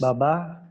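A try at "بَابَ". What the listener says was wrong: Baba. Jangan babah. Jangan babah. Baba.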